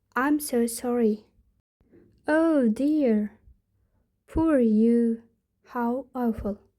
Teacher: Intonation, high rising tone to express sympathy